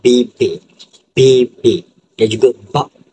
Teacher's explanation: Konsan letusan ataupun plosif merupakan melibatkan penutupan penuh aliran udara sebelum dilepaskan secara tiba-tiba